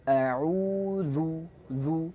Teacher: Waw panjang, posisinya mencucu sama. A'udzu, dzal dia tipis, posisinya mencucu